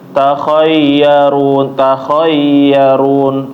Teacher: huruf ya, Bapak, itu seperti ditekan sedikit ya. Jangan sampai dia malah kayak idgham.